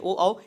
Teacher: ये कंठ जीभ और ओठ से बोले जाते हैं, ठीक, इसे कंठोष्ठ बोला जाता है, ठीक, ये याद रखिएगा।